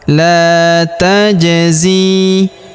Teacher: Huruf ja berharokat sukun kita pantulkan atau kita qalqalahkan.